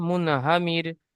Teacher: র সাকিনের পূর্বে জের এসেছে তাই র কে বারিক করে পড়তে হবে